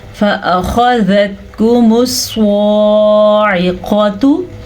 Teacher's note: صاد کو پر پڑھنا ہے، جیسے خا کو پر پڑھنا تھا اسی طرح صاد بھی پر پڑھا جاتا ہے